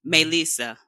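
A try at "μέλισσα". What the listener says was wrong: Yeah, just put the tone at the beginning, Melissa.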